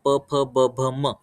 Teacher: उपधामनीयानाम ओष्ठौ म्हणजे आता प वर्गाचं जर उच्चारण करणार प फ ब भ म, तर हे उच्चार करताना 2 ओठ एकमेकांवरती टच होत आहेत, तर त्याच्यामुळे त्यांचं उच्चारण स्थान हे ओष्ठ आहे.